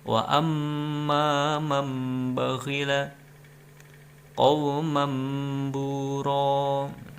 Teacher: tanwin menjadi huruf mim, kemudian didengungkan 2 harokat. Nah, itu hurufnya cuma satu, yaitu ba saja. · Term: iklab